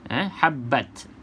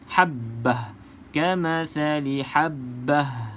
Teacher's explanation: Sebab ta ini ta yang bulat. Ta yang bulat ni kita berhenti dia seolah-olah bunyi huruf ha saja.